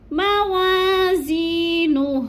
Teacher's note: فَأَمَّا مَنْ ثَقُلَتْ موازینہ زی کو تھوڑا سا ہم نے کھینچنا ہے کیونکہ یا مدہ ہے، یا ساکن سے پہلے زا کے نیچے زیر ہے تو یا مدہ کو 1 سے 2 الف کے برابر ہم نے لمبا کرنا ہے، موازینہ، اور الٹے پیش کو وقف کی صورت میں ہم نے ساکن کر دینا ہے